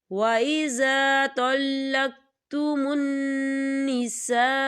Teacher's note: الف مدہ بھی ہو رہا ہے اور اس میں مد بھی ہے، تو ہم اسے 4 حرکت کی برابر کھینچ کے پڑھیں گے